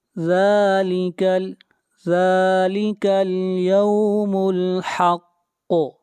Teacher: قاف کے اوپر قلقلہ کریں گے، قاف کو موٹا پڑھیں گے، قاف حروف مستعلیہ میں سے ہے۔